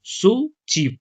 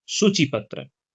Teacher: सु में आपका जोर थोड़ा अधिक समय तक अधिक समय तक जोर हो रहा है